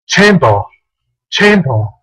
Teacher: en el inglés británico, ellos no pronuncian la R final. Así que ellos pronunciarían esta palabra así. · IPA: /'tʃeɪmbə(r)/